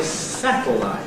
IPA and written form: ˈsætl̩aɪt (satellite)